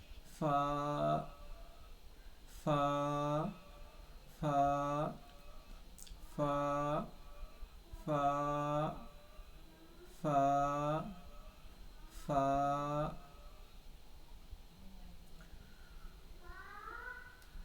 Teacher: है तो मुंह खुला रहेगा और दोनों होट नहीं मिलेगा बल्कि जो ऊपर का जो दांत है सामने वाला जो दोनों दांत वो नीचे के होट से मिलेगा · اوپر کا جو دانت ہے سامنے والا جو دونوں دانت وہ نیچے کے ہونٹ سے ملے گا ، جو تری کا حصہ ہے، یعنی ایک جو خشک حصہ · भीगा हुआ है जो हर वक्त भीगा ही रहता है तो जो भीगा हुआ हिस्सा है उससे जो ऊपर का जो दात है उसका कनारा मिलेगा या सटेगा तो फ आदा हो जाएगा